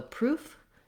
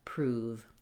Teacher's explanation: the difference is that between f and v, the only thing that I do differently is that f, I don't turn my voice on, whereas v, there's vibration here. My voice is on. But in order to make that vibration happen and to be able to perceive this v sound at the end, we actually hold the vowel oo longer in the word prove than we do in the word proof.